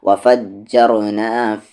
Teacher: را کو ہیوی کریں گے کیونکہ را کا ساؤنڈ اوپر ہے